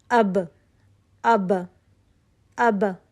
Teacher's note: ہوا کا چلنا محسوس نہیں ہوتا ہے، ٹھیک ہے، با میں ہوا کا چلنا محسوس نہیں ہوتا